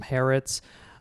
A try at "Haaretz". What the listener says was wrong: You got to pronounce the Aleph.